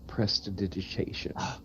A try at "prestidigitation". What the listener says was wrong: You're putting the wrong emphasis on the word. Is it not prestidigitation?